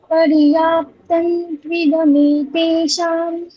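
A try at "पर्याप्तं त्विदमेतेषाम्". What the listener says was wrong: ওখানে ত্রিদমে, এর মধ্যে আর কোনো দীর্ঘ নেই, ত্রিদমে, ঠিক? এতে শাম, ওখানে মকারই বলতে হবে। কেন মকার বলতে হবে বলুন তো? পরে ব আছে, ঠিক, সেই জন্য ঠিক। তাহলে ওখানে মকারই বলবেন।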